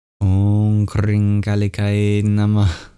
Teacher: the dot below the H at the end is a beautiful feature of Sanskrit called a visarga. And that means that we give our breath at the end